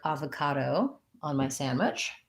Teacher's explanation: avocado has first syllable stress, vowel A at first, and then this O is going to say schwa, sounds like ava, and then another ka, do.